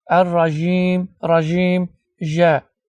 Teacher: bəzi xəli ölkələrində məsələn cim hərfinə j kimi də tələffüz edirlər.